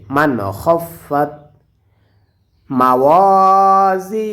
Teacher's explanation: নুন সাকিনের পরে ইজহারের হরফ এসেছে এজন্য এখানে স্পষ্ট করিয়া পড়তে হবে